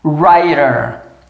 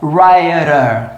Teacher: E mais uma vez, o T entre vogais com som de R